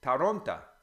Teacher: the O, if it's not stressed in a word, becomes A. So Toronto is Taronta, because the O becomes an A.